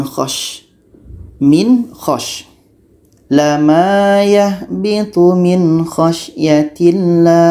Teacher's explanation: Jadi tidak ada suara mendengung, nun sukun harus jelas , kha juga harus jelas. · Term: izhar halqi